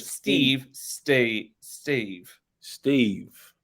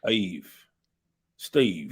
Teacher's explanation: in some places in London we get a little scoop into it rather than going straight for that E